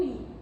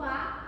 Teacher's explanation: o I é uma vogal alta, enquanto o A é uma vogal baixa.